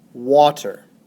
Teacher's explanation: for example the word water the first syllable W is stressed the second syllable tur is unstressed